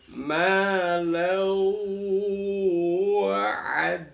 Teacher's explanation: Idgham itu dimasukkan bihuna dengan mendengung. Jadi lannya dibaca dimasukkan ke wau disertai dengan mendengung. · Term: idgham bihuna